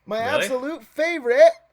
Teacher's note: Oh, it's a glottal stop. Yeah, he went Cockney for a second.